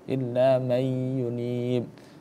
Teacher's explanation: Nunnya gak terbaca illa may yunib. Nah, idghamnya dibaca dengan ghunah. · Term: idgham bighunah